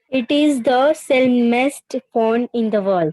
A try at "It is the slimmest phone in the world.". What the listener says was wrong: Sil नहीं है वो. Sil नहीं है. It's slur. Sil नहीं है. Slimmest is the right pronunciation. Slim. Slimmest.